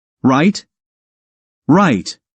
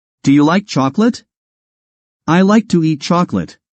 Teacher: the rising pitch on the word right makes it a question while the falling pitch makes a normal statement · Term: intonation